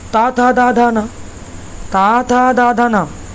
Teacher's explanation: दंत वर्ण जो दांत के सटा के बोले जाएंगे, जैसे ता था दा धा ना, ता था दा धा ना, तो दंत बोला ता था दा धा ना।